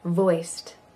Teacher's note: the D at the end of voice sounds like a t good vast view view view vehicle looks like vehicle and you · And the D at the end of voiced sounds like a T.